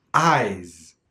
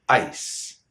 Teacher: eyes with a voiced sound Z then it's the pure form